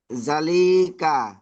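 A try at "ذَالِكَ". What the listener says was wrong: এখানে জাল খাওয়া, যা একালি পরিমাণ টানতে হবে, যা একালি পরিমাণ টানলাম। তারপরে লিকা, লামজের লি, কাব জবর কা, লিকা। এই দুটো হারাকাত, হারাকাতে পড়া দুটো টান হবে না।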